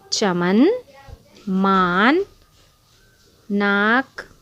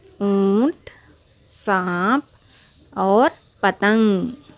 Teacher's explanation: لفظ سانپ میں نون کی آواز پوری ادا نہیں ہوتی اور ناک سے گنگنی سی آواز نکلے گی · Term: نون غنہ